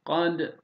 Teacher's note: Dala vurgu yapıyoruz. Ra'yı kalın telaffuz ediyoruz.